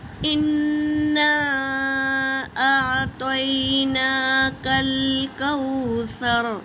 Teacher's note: اور مد منفصل ہے، 3 سے 4 الف کے مقدار کھینچیں گے